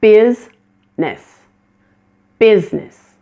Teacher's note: Business is another one of those words that has a missing middle syllable. The I in the middle of the word is not pronounced at all and this word becomes two syllables.